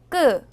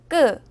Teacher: 된소리는 기본 자음 두 개를 겹쳐 쓰는 것인데요 소리를 낼 때는 입안에 긴장을 주어 발음합니다